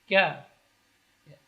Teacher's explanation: Ka, tipis, dan kaf termasuk huruf hamas.